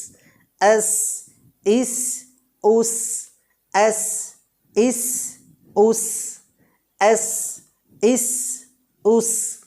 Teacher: জায়ে যে পরিমাণ সফির প্রকাশিত হয় তার থেকে অল্প পরিমাণ সফির প্রকাশিত হবে সিন বর্ণটায়।